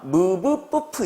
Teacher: 이 무브뿌프를 발음할 때는 두 입술이 닫히면서 이 입술에서 소리가 만들어집니다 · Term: 양순음